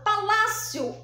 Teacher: então quando eu falo Palácio Olá é o som mais forte então aqui é a penúltima sílaba eu chamo de paroxítona